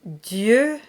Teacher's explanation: Dieu is the only word that has that very closed E sound, and all the other EU sounds are the open E sound.